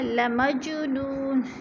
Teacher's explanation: جیم پہ قلقلہ ہے، نو کو بھی تھوڑا سا کھینچیں گے، وہ مدہ ہے، نون 2 پیش نون، وقف کی صورت میں 2 پیش نہیں پڑھیں گے بلکہ ساکن کر دیں گے۔